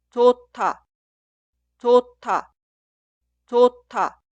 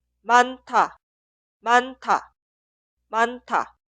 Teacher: En este caso, 히읗 y 디귿, las dos consonantes suenan como un sonido forzado, 티읕. Por eso la primera palabra se escribe así, pero suena 좋다, 좋다, 좋다.